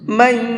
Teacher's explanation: من کے اندر غنہ کریں گے، اس لیے کہ یہاں پر نون ساکن ہے اور نون ساکن کے بعد میں یا ہے۔